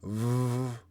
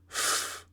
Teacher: You use your top teeth against your lower lip, and then you blow with no air, or you sing it out, and you get v. So one is voiced, one is unvoiced.